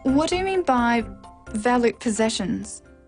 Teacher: This is a w question, so it needs a falling tone.